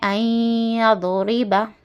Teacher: نون ساکن کے بعد یا آیا، یومن والا لیٹر ہے یا، ادغام مع غنہ ہے، یہ یا ہے اس لیے ہم اس کو گنہ کے ساتھ پڑھنا